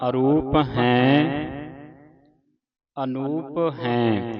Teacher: ਧਿਆਨ ਰੱਖਣਾ ਅਰੂਪ ਹੈਂ ਅਨੂਪ ਹੈਂ ਹੈਂ ਦੀ ਆਵਾਜ਼ ਉਚਾਰਨ ਹੋਵੇ। ਬਿੰਦੀ ਦੇ ਨਾਲ ਜਿਹੜੀ ਆਵਾਜ਼ ਇਹ ਨੱਕ ਦੇ ਵਿੱਚ ਉਚਾਰਨ ਹੁੰਦੀ